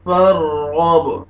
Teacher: با قلقلہ سٹاپ کریں گے